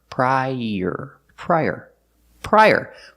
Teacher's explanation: Use the y sound like in yellow to link the two vowels.